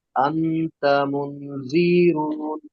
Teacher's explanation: নুন সাকিনকে এক আলিফ পরিমাণ গুণনা করে পড়তে হবে